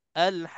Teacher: Lambat sikit untuk nak sebutkan qaf ni supaya kita singgah dekat qaf yang mati yang tersembunyi di dalam huruf yang ada sabdu ni